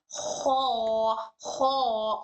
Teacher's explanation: ठीक है, तो इसकी आवाज ख में back side of our tongue, back side हमारे टंग का ऊपर पैलेट को टच करेगा।